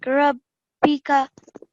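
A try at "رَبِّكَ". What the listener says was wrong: You've pronounced brilliant. So it's not Rabbi, it's a Rabbika, and you do stay on the ba for a tiny bit long.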